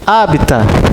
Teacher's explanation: Não é oxítona, não é paroxítona, é proparoxítona.